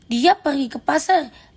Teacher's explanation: Sedangkan jika dikatakan dia pergi ke pasar dengan nada turun dengan tekanan kuat itu menjadi penegasan